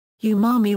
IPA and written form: uːˈmɑːmi (Umami)